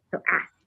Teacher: Instead of like pronouncing the K, like ask, because learners tend to have a hard time pronouncing the K. If you pronounce it and talk it like say it fast, it tends to sound like ask without the K.